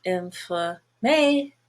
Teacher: But if you look at the longer word inflammation, now the A is still gray, but everything else is a schwa.